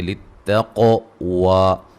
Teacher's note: قاف کو موٹا ادا کریں گے, مد اصلی ہے